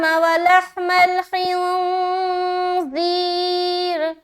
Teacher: را کو جلدی ادا کر رہے، را کو باریک رکھنی ہے کیونکہ اس کے نیچے زیر ہے